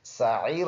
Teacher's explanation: سین سیٹی والا عین گلے سے صاف ادا کریں گے. یہ یا مدہ ہے، یا ساکن ہو اس کے اوپر سکون ہو، اس سے پہلے ورڈ کے نیچے زیر ہو.